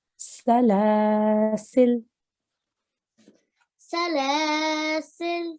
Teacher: make a pause by changing this fatha on the lam into a sukoon, and you would then say salasil.